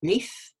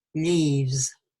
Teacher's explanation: So the f is unvoiced, you've got the vibration, f is unvoiced. So with an unvoiced consonant, the e sound is slightly shorter. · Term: clipping